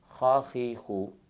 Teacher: खा का मखरज है अदना हलक, यानी हलक का वो हिस्सा जो मुंह की जानिब है, यानी जहाँ मुंह और गर्दन का जोड़ है यहाँ से खा को अदा करते हैं।